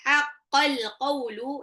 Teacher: alif lamnya dibaca jelas karena alif lamnya bertemu dengan qaf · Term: alif lam qamariyah